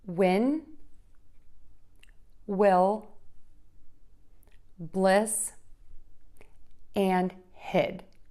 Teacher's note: for this short ih your mouth is more closed that's the short i and your tongue is behind the top front teeth